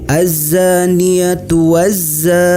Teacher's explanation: Mad Thobi'i dibaca panjang sebanyak dua harokat · Alif lam syamsiah. Alif lam tidak nampak tapi dimasukkan langsung kepada huruf zai.